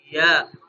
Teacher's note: شین کی طرح زبان اوپر اٹھے گی، لیکن شین کی نسبت تھوڑی کم اوپر اٹھے گی